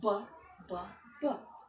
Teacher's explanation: the first syllable is stressed and the remaining two syllables are not stressed